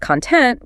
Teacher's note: Content with the stress on the first syllable is the stuff inside a box. But content with the stress on the second means you're happy and satisfied